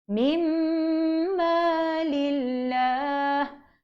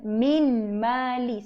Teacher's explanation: Jadi pancungkan nun tu. Jadi mim yang pertama bertanda sabdu itu bertemu dengan mim yang kedua bertanda sabdu. Panjangkan dua harakat. · Dia kena masukkan nun ke dalam mim.